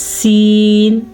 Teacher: سین میں سیٹی کی آواز آ رہی ہے